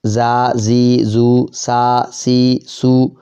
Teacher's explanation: زبان کی نوک نیچے کے دانتوں کے پیچھے سیٹی والے حروف